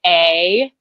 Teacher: the A is a very American Midwestern A because I'm from the Midwest. So it's really wide.